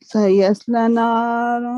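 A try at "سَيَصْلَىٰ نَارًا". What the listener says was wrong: نہیں لام پر ورٹیکل فتح.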